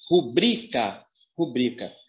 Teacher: Essa primeira palavra, a sílaba mais forte é o bri.